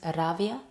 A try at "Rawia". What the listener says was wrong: Yeah, it's not a V, it's W. Because W in Dutch is V. So sometimes when they see my name Rawia, it's a V, but it's not. It's more like the English pronunciation of the W. So it's Rawia.